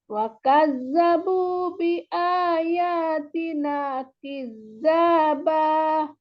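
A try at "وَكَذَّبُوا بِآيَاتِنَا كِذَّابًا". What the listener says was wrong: Wa kadzabu bi ayatina kizzaba. Jangan terlalu terangkat ya. Supaya didatarkan. Kizzaba. Datar.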